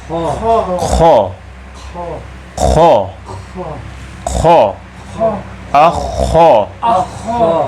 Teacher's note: زبان اوپر کی طرف اٹھتی ہے اور حرف بلندی کے ساتھ ادا ہوتا ہے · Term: استعلا